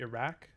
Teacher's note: We also have uvular stops, like this is the Q sound that you see in the name of the country Iraq, which would be pronounced not like a k as we do in English, but with a q.